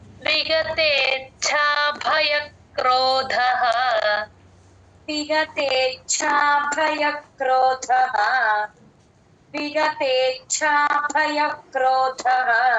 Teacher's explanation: చ కింద చ వత్తు మహాప్రాణం ఉంది తే కి ఛ ని జాయిన్ చేసి చెప్పండి